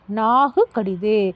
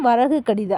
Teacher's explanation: நிலைமொழியில் ஈற்றில் நிற்கும் உகரம் தனக்குரிய ஒரு மாத்திரையிலிருந்து அரை மாத்திரையாய் குறுகி ஒலிக்கும் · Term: குற்றலுகரம்